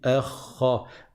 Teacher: le e ne va pas devenir emphatique à cause du kha. Donc je dis pas orha. · le kha, il est emphatique, il est grave. Je dis pas erhe.